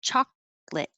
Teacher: we don't use the middle syllable